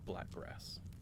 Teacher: Some do black grass, right? Where you have a glottal stop.